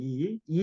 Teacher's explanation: 혀가 그 이 뒤쪽에 이렇게 붙어가지고 혀가 최대한 앞쪽으로 빠지면서 나오는 소리가 됩니다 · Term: 전설모음